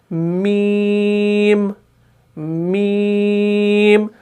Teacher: हमारे नाक के बांसे में भी थोड़ी सी आवाज गूंज रही है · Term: गुन्ना